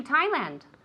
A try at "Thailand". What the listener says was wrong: Thailand. There's a D at the end.